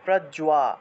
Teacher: বর্গীয় জয়ের সাথে বফলা থাকায় জুয়া উচ্চারণ হবে, প্রজ্বা, জুয়া আকার আছে, আকার থাকায় জুয়া উচ্চারণ হয়েছে।